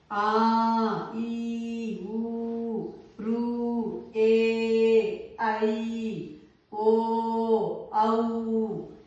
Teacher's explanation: ద్విమాత్ర కాలంలో అంటే మనం కొంచెం దీర్ఘం తీసి సాగ తీసి చెప్తాం ఉచ్చరిస్తాం. ఆ ఈ ఊ ఋ ఏ ఐ ఓ ఔ ఇవి మనం దీర్ఘం తీసినాం కాబట్టి వీటిని దీర్ఘాలు అన్నారు.